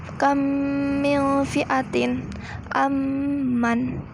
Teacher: Apabila ada huruf mim sukun bertemu dengan huruf mim, maka cara membacanya adalah seperti menyuarakan mim rangkap atau ditasydidkan dan wajib Anda dibaca dengung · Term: idgham mim